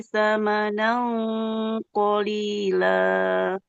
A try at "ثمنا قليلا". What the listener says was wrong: Sama nau qalila. Tanwin bertemu. Ikhfa'nya ditebalkan. Sama nau. Sama nau qalila. Karena tanwin bertemu dengan huruf qaf yang tebal, maka tebalkan